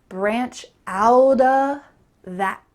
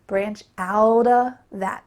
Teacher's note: But when we're speaking clearly, you could just say branch out of that with a clear of sound. But when we're speaking quickly, it sounds like branch out of that with a stop T.